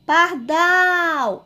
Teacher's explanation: eu falei com mais intensidade, com mais força, a sílaba dal. Então, ela é uma oxítona. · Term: sílaba tônica